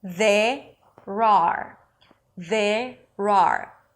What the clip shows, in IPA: ðerər